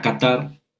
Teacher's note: En la palabra catar no hay acento ortográfico, pero la sílaba tónica es la última, tar.